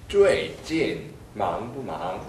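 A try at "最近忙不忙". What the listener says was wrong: 지금 두 번째 망할 때 입이 닫혔어요. 망부망 하고 닫혔어요. 닫지 마십시오. 最近. 조금 전에 最近 이렇게 들렸어요. 진. 네, 진. 진 아니고 진.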